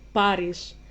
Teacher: You make it less breathy, pretty much. Like, not Paris, it's Paris.